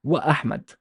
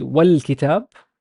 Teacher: I emphasize the glottal sound or the glottal stop sound.